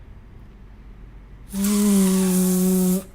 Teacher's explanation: to help you make an accurate sound when you're speaking fast you can hear that the sound is quite choked sounding